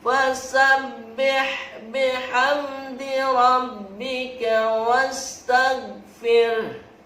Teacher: huruf goin tidak boleh memantul, harus terangkat, stop di situ. Fasabbih bihamdi rabbika wastaghfir.